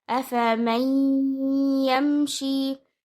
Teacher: All of the first three letters are to be read light with one count. And then you join the meme with the ya, giving ghunna as you merge the noon into the ya.